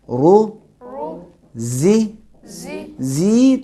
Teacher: رو زی تھوڑا سا بھی کھینچیں گے تو ہم اپنی طرف سے یا کو وجود میں لا رہے ہیں, ایک یا ایجاد کر رہے ہیں, یہ صحیح نہیں ہے.